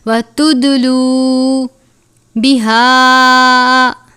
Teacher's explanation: دال پر کلکلا کرتے ہیں، اس لیے آواز میں جنبش آنی چاہیے